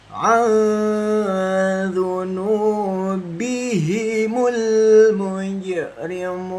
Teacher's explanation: Nah, ini jim sukun itu dipantul sobat Quran kawan-kawan. Jim sukun itu dipantul, membacanya hati-hati membacanya ya.